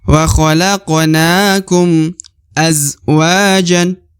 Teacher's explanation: Huruf za sukun maka dibaca az. Kemudian wa dibaca 2 harokat karena terdapat alif di depan huruf wa